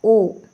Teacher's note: अंदर से आएगी आवाज़ कंठ से, और ओ, और दोनों ओठों में जो है गोल सर्कल बनेगा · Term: कंठोष्ठ